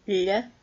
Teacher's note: made with the tip of the tongue on the back of the bottom teeth, and you make the sound with the middle of your tongue, so it sounds like a L and a Y smushed together.